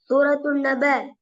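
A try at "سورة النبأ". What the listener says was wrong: நப அல்ல, நப. நப கடைசியில அலிஃப் வந்தீங்க. நப நீடப்படாது. நப. நப.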